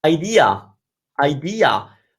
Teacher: most people and most variations of English have the ah of idea